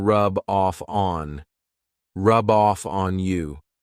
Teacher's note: I'm taking the F from off and adding it to On